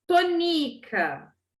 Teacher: A sílaba tônica aqui é o ni, tonica.